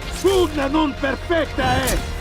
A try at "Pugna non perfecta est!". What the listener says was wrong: The emphasis on the est doesn't really make sense. It should be de-emphasized because it's an enclitic word and it's not so important. Perfectast.